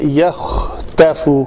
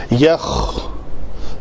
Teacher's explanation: اس کا خا تا فا مخرج مادہ بن جائے گا، معنی الٹ ہو جائے گا. تو خا کے لیے یہ گلے کی جو رگڑ کی آواز آتی ہے یہ ضرور آنی چاہیے